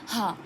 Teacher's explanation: वायु बंद कंठ को खोलकर झटके से बाहर निकलती है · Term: काकल्य वर्ण